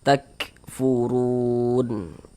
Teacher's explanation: Ini namanya harakat domah nih atau tanda baca dhammah. Maka huruf ra dibaca tebal, dibaca takkhim sehingganya pangkal lisan kita naik terangkat ke atas ketika kita mengucapkannya.